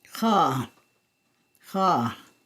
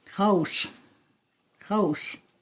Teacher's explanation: It's written here with a symbol that has an X with the little hat on top of it again, or what is called a hachek, so it's X hachek. It's a voiceless uvular fricative and sounds like ha.